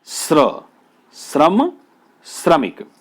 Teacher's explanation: तालव्य श, और तालव्य श कैसा है? तालव्य श बिना स्वर के है।